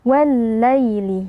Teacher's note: Yang pertama pada wal-laili di sini terdapat alif lam syamsiyah, ya alif lam yang bertemu dengan huruf lam. Ya alif lam pertama ditasydidkan atau dileburkan ke dalam lam yang kedua